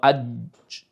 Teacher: জিমটা এত শক্তভাবে তার মাখরাজের সাথে লেগে যায় যে আওয়াজটা বন্ধ হয়ে যায়। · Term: সিদ্দ